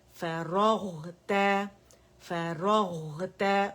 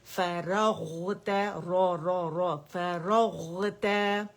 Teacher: فا فتح فا, را فتح غین سکون راغ راغ, تا فتح تا فراغتا فراغتا, را ہیوی ہے اور غین میں رکھا ہوا ہے, اس کی آواز کو چلائیں گے